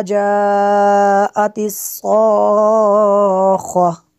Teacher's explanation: صاد کو پر کرنا ہے، خا کو بھی پر کرنا ہے